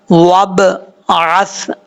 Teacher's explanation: با میں قلقلہ ضرور ہے لیکن زبر نہیں پڑھنی چاہیے۔ اگر آپ پڑھیں گے وابعث تو زبر پڑھا جا رہا ہے، لیکن آپ نے قلقلہ کرنا ہے، وابعث، اس طریقے سے۔